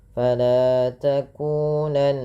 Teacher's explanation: takunanna nun berharakat tasydid dibaca dengan gunnah. Cara membacanya dengan menahan bunyi suaranya. Fala takunanna, ditahan.